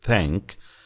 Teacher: In the word thank, the th sound does not have a vibration.